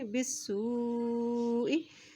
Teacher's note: अब देखिए वाव के ऊपर जज़म भी है और उसके ऊपर मद भी है, इसलिए सीन की पेश को वाव के साथ मिलाएंगे, वाव के ऊपर जज़म है और वाव के ऊपर मद होने की वजह से इसको लंबा करके पढ़ेंगे